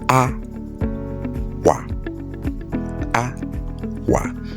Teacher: that is high pitch landing from the right down to left and low pitch landing from left to right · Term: high pitch tone